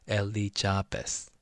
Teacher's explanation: So the Z sound in Korean, it doesn't have the Z sound, so we go like the Elizabeth, like the J sound.